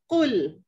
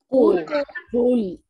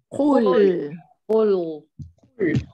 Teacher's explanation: Dari belakang lidah naik kena langit-langit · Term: huruf qaf